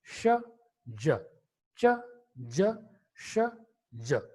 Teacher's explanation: They are produced by 2 simultaneous articulations: blade of the tongue as the active articulator and the teeth ridge is the passive articulator. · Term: palato-alveolar sound